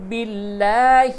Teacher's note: لفظ اللہ کا لام باریک ہوگا کیونکہ اس سے قبل زیر ہے